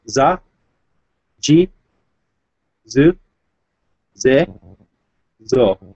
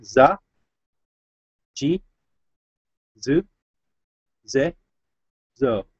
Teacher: this is the S line voiced, which makes it a Z.